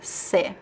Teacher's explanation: the word você is often reduced to se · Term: reduction